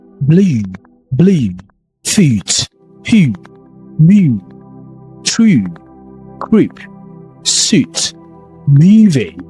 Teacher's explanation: The U sound here, the U vowel, is a long rounded back vowel, lip is slightly rounded. · Deep and long U sounds, not nasal, light. It's kind of like clearly pronounced.